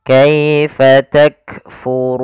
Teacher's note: Kemudian pada lafal ru sendiri ada bacaan mad tabi'i, yaitu ditandai dengan dhammah bertemu dengan huruf waw sukun. Maka pada lafal ru kita panjangkan dua harakat